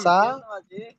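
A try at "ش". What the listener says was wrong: সা নয়, সিন সিন।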